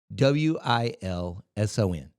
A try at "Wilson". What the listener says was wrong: No. There's a T in there. It's just yeah, but you would say I'd be like, I'm from Wilson. Yeah. That's just the way people definitely from Wilson say it.